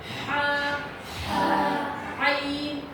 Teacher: عین اور ہا جو ہیں یہ حلق کے نچلے حصے سے نکلتے ہیں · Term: حروف ہلکی